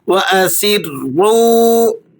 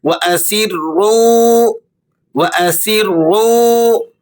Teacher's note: سین کو آپ نے باریک سیٹی کے ساتھ ادا کرنا ہے، اور را اس پر تشدید بھی ہے، اس وجہ سے را کو آپ نے پر کر کے، موٹا کر کے اور سختی کے ساتھ ادا کرنا ہے۔